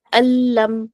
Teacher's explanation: پھر اسی طرح سے دیکھیں نیکسٹ ماللبدا، ٹھیک ہے، نون کی ساؤنڈ تو بالکل نہیں آ رہی ہے نا، مالل تو نہیں پڑھ رہے ہم، ماللبدا، بالکل بھی نون کا ساؤنڈ بالکل بھی غنہ نہیں ہوگا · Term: بلا غنہ